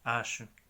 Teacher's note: La combinación CH no se pronuncia como ch, como en español, es más bien como sh, como SH en inglés